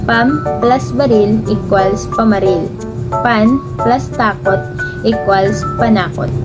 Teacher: Nagaganap ang asimilisasyong ito kapag natapos na maging N at M ng panlapi dahil sa pagkikibagay sa kasunod na tunog ay nawawala pa ang sumusunod na unang titik ng salitang ugat at nananatili na lamang ang tunog na N or M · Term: asimilisasyong ganap